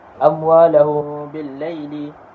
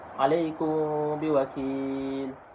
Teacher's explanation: Cara bacaannya hendaklah dengung sepanjang 2 harakat dalam keadaan bibir direnggangkan. Dinamakan ikhfa' syafawi kerana makhraj huruf mim yang keluar dari 2 bibir.